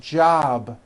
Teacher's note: job ends in a B, which is a voiced sound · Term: voiced B ending